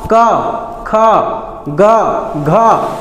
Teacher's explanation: क, ख, ग, घ आ रहा है ना, सब में अंग, सब में कंठ के सहायता से बोल रहे हैं। बिना कंठ के सहायता से बोल के देखो नहीं बोल पाओगे, इसीलिए इसको कंठव्य बोला जाता है।